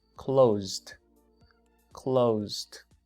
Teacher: El último sonido no es S, es Z. Por lo tanto, vibran sus cuerdas.